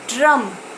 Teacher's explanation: जब ड्रम बोलेंगे तो आप देखेंगे कि र तो हम लोग पूरा बोल रहे हैं, र हम लोग पूरा मूल रूप से बोल रहे हैं, मतलब एकदम क्लियर बोल रहे हैं ड्रम में र। लेकिन ड, ड्रम में ड हम लोग पूरा नहीं बोल रहे हैं, ड है आधा और ड के बाद आ जा रहा है र